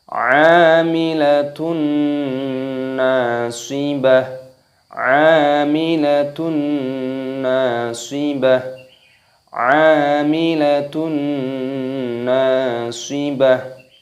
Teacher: Di sini dipanjangkan, ada tanda alifnya, dan di sini tak marbutohnya terdapat dhammah tanwin yang bertemu dengan huruf nun. Ini hukumnya dibaca idgham bi gunnah, jadi dimasukkan dan disertai berdengung. Dan di sini ada tanda alifnya, maka huruf nunnya dipanjangkan.